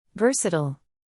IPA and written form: ˈvɜːr.sə.t̬əl (Versatile)